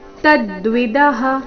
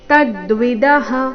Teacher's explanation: ತದ್ವಿದಹ ತ ಮೇಲೆ ಆಘಾತ